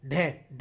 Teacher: जीव जो है हमारी एकदम ऊपर उठके मूर्धा को स्पर्श करती है · ढ ढ बोलेंगे तो ऐसे ही उसमें हो रहा है। ठीक है, जीभ जो है हमारी एकदम ऊपर उठ के मूर्धा को स्पर्श करती है और दोस्तों झटके के साथ नीचे आ जाती है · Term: उत्क्षिप्त वर्ण, उच्छिप्त वर्ण